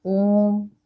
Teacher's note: इन स्वरों के उच्चारण में हरस्व स्वर से 3 गुना समय लगता है। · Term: प्लुत स्वर